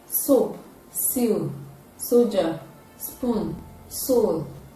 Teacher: produced when the tip of the tongue is touching the availability it is a voiceless alveolar fricative sound